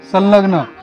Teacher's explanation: परत तो अनुनासिक हवा सोडली नाकातून आणि लच उच्चारला जातोय